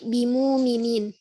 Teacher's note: Mengibdalkan hamzah dengan huruf wawu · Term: ibdalul hamzah wawan